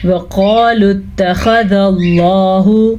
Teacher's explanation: واو کو لمبا نہیں کریں گے کیونکہ واو پہ زبر ہے، قاف کو پر پڑھیں گے۔ وَقَالُوا اتَّخَذَ اللَّهُ، خا کو بھی پر پڑھنا ہے، لفظ اللہ کو بھی پر پڑھنا ہے کیونکہ لفظ اللہ سے پہلے زبر ہے۔